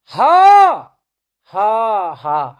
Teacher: और पूरे 52 वर्णों में सबसे ज्यादा वायु अगर निकलती है, किस वर्ण के उच्चारण में निकलती है, ह के, और यही महाप्राण का निर्माण करता है। तो इसमें जिह्वा के ऊपर से वायु का घर्षण होता है, और ऊपर से जिह्वा के वायु के घर्षण के कारण इस वर्ण के उच्चारण में भी उष्मा पैदा होती है।